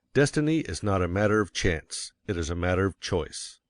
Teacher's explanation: Of course, you will want to emphasize destiny, for it is the principal idea in your declaration. And you will put some emphasis on not, else your hearers may think you are affirming that destiny is a matter of chance.